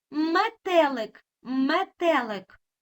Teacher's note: Ми чуємо м твердий приголосний звук М.